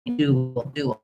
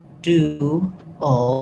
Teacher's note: it has the oo sound and the ul sound. You end up a little in between, dual. It's one syllable, but because I'm moving from the oo shape to the shape, dual, you will hear a little sound in there.